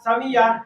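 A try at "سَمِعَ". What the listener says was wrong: সামিআ। আইন একটু কি করতে হবে, গলার ভিতরে নিতে হবে। সামিআ।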